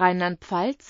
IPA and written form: ˈʁaɪ̯nlantˈp͡falt͡s (Rheinland-Pfalz)